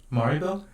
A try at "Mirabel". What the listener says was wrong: Mirabelle. I think you got the A and the I mixed up.